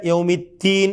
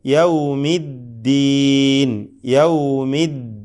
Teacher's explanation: നൽകപ്പെടുന്ന അക്ഷരമാണ് ദാൽ അപ്പൊ യൗമിദീൻ അദ്ദീൻ അതൊരു ലൂസാക്കി അങ്ങനെ പറയാൻ പറ്റുകയില്ല കടുപ്പത്തോടുകൂടി തന്നെ പറയണം ശദ് നൽകപ്പെട്ട ദാൽ അത് ചിലർക്ക് താ പോലെ യൗമിത്തീൻ എന്നൊക്കെ ഒക്കെ ആയി മാറും തീ എന്ന്